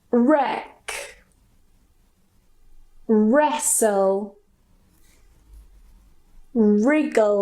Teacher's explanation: we just don't pronounce the W. We go straight to the R.